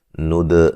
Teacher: دال پہ قلقلہ کریں گے